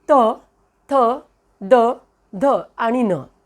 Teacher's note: दंत्यवर्ण दाताचा स्थानापासून होणारा उच्चार